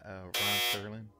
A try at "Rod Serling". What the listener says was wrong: Rod Serling. You keep saying Ron.